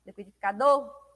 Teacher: O do emite com maior intensidade, né? Tem maior ênfase aí dentro dessa palavra. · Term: sílaba tônica